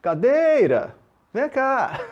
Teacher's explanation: Olha lá, onde se prolongou no dei, aquela é a sílaba tônica.